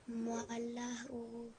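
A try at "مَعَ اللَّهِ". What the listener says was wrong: Now you missed the alif sound, and previously you pronounced alif first and then alam afterwards.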